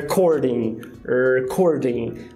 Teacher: como a primeira sílaba ela não é tônica, você tem um apagamento aí. Então, basicamente, você só fala o R.